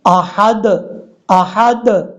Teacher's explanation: قلقلہ تو کرنا ہے لیکن زبر نہیں پڑھی جانی چاہیے